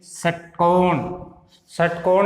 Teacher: षटकोण में स है वो मूर्धा से टच या स्पर्श करने के साथ उच्चारण होता है।